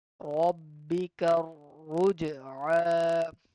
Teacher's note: Ra will be heavy and Jim will be giving us the sound of qalqala. So we need to bounce back.